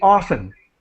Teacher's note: They're not going to pronounce the T.